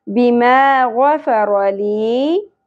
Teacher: یا ساکن سے پہلے زیر حرف مدہ ایک الف کے برابر کھینچنا ہے